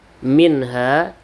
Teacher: ini zhar halq maka dibaca jelas tanpa berdengung